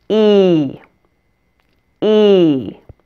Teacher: for this e you want to really stretch it out and you want to also spread your lips into a smile · what makes the English version different is that it's held longer and has a glide and is almost a diphthong now a diphthong is two vowel sounds that are blended together